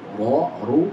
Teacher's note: Ujung punggung lidah itu huruf ra. Jadi huruf ra makhrajnya di ujung punggung lidah menempel dengan gusi gigi seri atas